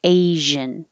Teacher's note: like shh but with voicing